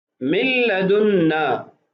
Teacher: من لدنا، ابھی دیکھیے یہاں پر نون ساکن ہے، ما بعد جو کلمہ ہے اس کی ابتدا میں حروف یرملون میں سے لام ہے، تو اس لیے ہم نے نون کو لام کی جنس میں تبدیل کر کے دونوں کا ادغام کیا